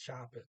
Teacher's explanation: He doesn't pronounce the R. He says shop it.